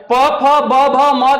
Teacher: प फ ब भ म का उच्चारण जो होता है वह ओट से होता है